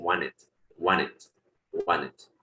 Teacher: la T muchas veces hasta la omiten, no la pronuncian